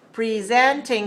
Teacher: to present is a verb so the stress is on the second syllable so we need to say presenting three stress a second presenting